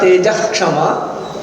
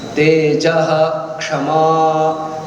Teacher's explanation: So whenever there is a Ksha and it is preceded by a Visarga, Visarga is pronounced fully.